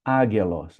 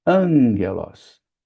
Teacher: Veja que ela é escrita com alfa, gama, gama, são dois gamas juntos, que equivale ao nosso GG, se for transliterar essa palavra, escrever com os caracteres em português, a gente escreveria AGGELOS, mas na pronúncia, o primeiro gama se torna um gama nasal. Então a gente não diz águelos, a gente diz angelos.